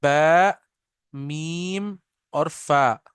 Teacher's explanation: ये तीनों, इसमें हमारे होंठ इन्वॉल्व हैं, लिप्स आर इन्वॉल्व इन तीनों में